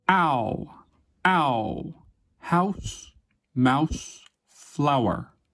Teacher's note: begins low in the mouth between /ɑ/ and /æ/ and rises and backs toward /ʊ/ · Ow begins low in the mouth between a and a and rises and backs toward There is also a pretty big change in the shape of the lips when you pronounce this diphthong. It starts with wide open unrounded lips, but ends with very rounded lips. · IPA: /aʊ/, aʊ